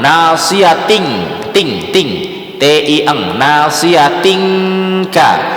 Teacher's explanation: nasiyatin itu tadi ya tanwin atau nun sukun ketemu huruf kaf, dia jadi eng. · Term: ikhfa hakiki